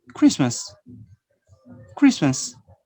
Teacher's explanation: we are going to omit the consonant T. And you just say Christmas, Christmas, no T.